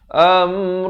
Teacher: Lafz jalalah di sini dibacakan dengan tebal